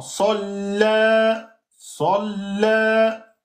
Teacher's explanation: Sa, lem, shidda. Donc salla plus alif maksoura 2 temps.